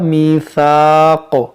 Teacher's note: ये सीन नहीं है कि इसको सीटी लाएं, मीशा मीशाक या मीसाक, इस तरह से नहीं पढ़ना है।